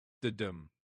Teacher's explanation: An iamb is a fancy term from the world of poetry and meter. It's a little two-syllable foot where the first syllable is unstressed and the second is stressed, like a soft little drum beat.